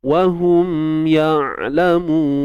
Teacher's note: Huruf ain ni bersifat tawassut. Suara yang tidak tertahan dan tidak juga mengalir. Dia tengah-tengah je.